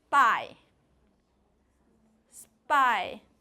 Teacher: and that different lies in V the p is in spy has a very short vot you don't feel that puff of air coming out